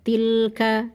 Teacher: Kemudian ada lam sukun, ditawasudkan sebentar, ditahan sebentar. Tilka, jangan dibaca tilka, nah, gitu, tidak.